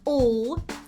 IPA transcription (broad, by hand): əl